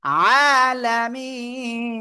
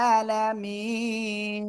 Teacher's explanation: এই ওয়াকফ করলে যদি শেষ অক্ষরে সাকিন হয় তাহলে কি করব তাহলে আমরা তিন আলিফ টেনে পড়বো এক আলিফের জায়গায়